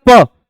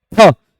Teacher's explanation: आपने बोला प फ, तो पा में वायु कम खर्च होगी और फा में ज्यादा होगी